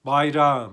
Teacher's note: ğ düşürüyoruz Bir önceki sesli harfi bir ses uzatıyoruz